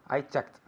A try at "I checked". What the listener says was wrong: Very good pronunciation.